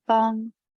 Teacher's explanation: it's the very high tone so it's easy to say because you just go right to the top